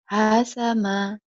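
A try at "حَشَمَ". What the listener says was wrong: Pendek, pendek. Hasyama, shinnya yang belum keluar tuh. Hasyama, karena kadang-kadang kau kagok. Kagok ya. Karena ada setelah ha, terus sin. Ha, hasyama gitu. Angin nih.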